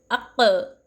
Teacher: हुरूफ़ क़लक़ला कैसा पढ़ा जाता, आवाज़ डबल आती हुरूफ़ क़लक़ला की